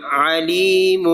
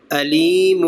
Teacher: تو وسط حلق سے پہلا ادا ہوگا عین علیم، اور آگے والا ادنی حلق سے حمزہ ہے تو علیم